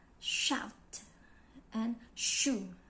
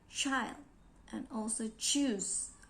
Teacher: the sound produced involved behind alveolar ridge and hard part in the roof of our mouth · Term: palatal sounds